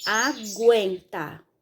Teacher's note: quando a gente pronuncia a palavra, a gente ouve o fonema G e o fonema U.